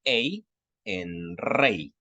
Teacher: vamos a pronunciarla como una E un poquito larga, con un pequeño sonidito de I al final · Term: diptongo